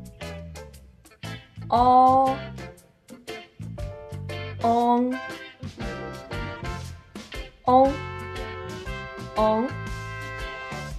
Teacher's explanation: es un sonido intermedio de la u y la o en comparación con la o original la boca se abre un poco menos y el sonido es más corto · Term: vocal nasal trasera